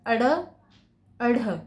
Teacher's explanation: टंग ऊपर जाके फिर नीचे उछल के आती है · आपको तो यहां पर मैंने डेफिनेशन भी लिख दी उत्क्षिप्त व्यंजन जीव का भाग थोड़ा उठकर ऊपर उठकर झटके से नीचे गिरता है · उत्क्षिप्त व्यंजन, जीभ का भाग थोड़ा ऊपर उठकर झटके से नीचे गिरता है, इसलिए इनको उत्क्षिप्त व्यंजन भी कहा जाता है, ठीक है।